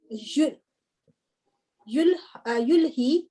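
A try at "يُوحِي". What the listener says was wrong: नहीं, लाम नहीं है ना, वाओ है। यूही, जी यूही,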